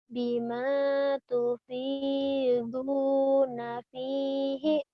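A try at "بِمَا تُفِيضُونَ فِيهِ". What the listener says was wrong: Bima tufiduna fihi. Fihi ya bukan bihi ya. Fihi.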